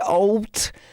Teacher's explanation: the D sounds more like a t